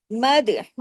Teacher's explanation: र को हमने हैवी भी करना है। जुबान आपकी ऊपर उठे।